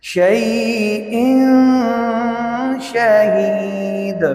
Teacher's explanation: واللہ علی کل شیء، یہاں پر تنوین 2 زیر ہے، تنوین کے بعد شین حرف اخفاء ہے تو اس تنوین میں اخفاء ہوگا، یعنی غنہ